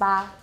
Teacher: it's not ejective it's not voiced